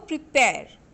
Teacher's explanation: So you have to put stress on pair, that is after pre.